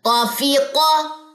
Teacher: قاف میں استعلاء کی صفت ہے، یعنی کہ اکثر لسان تو اوپر کو اٹھے گی لیکن وسط اللسان نہیں اٹھے گی، انفتاح ہوگا